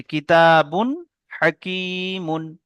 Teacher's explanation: তানবিনকে বিনা গুণনায় পড়তে হবে